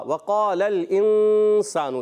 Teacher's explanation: इंसान यहाँ गुन्ना करेंगे इख्फा का गुन्ना होगा।